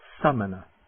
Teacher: It's a very short A, almost like the U in but.